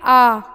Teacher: जब आप आ बोलेंगे आपका पूरा मुंह क्या हो रहा है, खुल रहा है, तो विव्रत में आ गया।